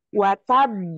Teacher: kita berikan pantulan di qalqalah ba yang kedua, watab. Nah gitu, beda ketika kita membaca ketika tidak tasdid.